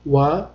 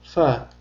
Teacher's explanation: Ularni maxrajiga eʼtibor bersak bir-biriga o'xshash demak vav harfini talaffuz qilishda lablarimiz bir-biriga tegadi. Fa harfini talaffuz qilishda esa tepa tishimiz pastki labimizga tegadi.